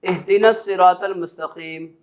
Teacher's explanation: حمزہ اور ہا یہ حلق کے نچلے حصے سے ادا کیا جاتے ہیں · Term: حمزہ اور ہا کا مخرج